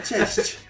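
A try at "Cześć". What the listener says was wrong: Ma perché fai così tanto la E?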